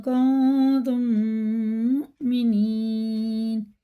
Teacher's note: میم ساکن کے بعد میم ہے تو یہ ہے ادغام شفی، یہاں پہ ادغام ہوگا یعنی غنہ کر کے پڑھا جائے گا